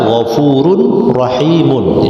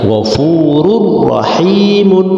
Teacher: Tanwin bertemu ra harus diidghamkan, harus dimasukkan tanwinnya, ghafurur rahimun. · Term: idgham bila gunnah